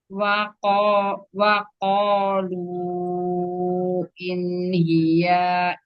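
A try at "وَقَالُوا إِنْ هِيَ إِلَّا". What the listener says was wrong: Ya-nya nggak panjang. In hiya illa.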